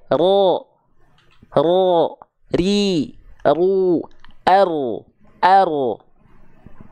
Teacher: getarannya hanya sedikit saja ro ro ri ru r r getarannya walaupun sedikit tapi tetap